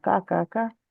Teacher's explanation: কাফটা খেয়াল করে ক্যা হয়ে যাচ্ছিল একদম বেশি বেশি ক্যা না, কা কা কা, সোজা স্ট্রেট।